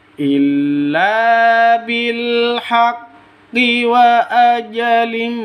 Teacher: Ma panjang 2 ketukan karena mad iwad.